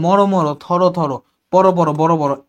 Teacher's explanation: এই যে সবগুলো দেখ ওকার যোগ হইছে লাস্ট ধ্বনিটা এই অর উচ্চারণ ও এর মত হইছে